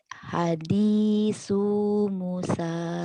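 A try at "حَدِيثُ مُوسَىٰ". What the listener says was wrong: Sunya pendek. Hadisu. Sunya ujung lidah ya. Sa. Hadisu Musa. Hadisu Musa.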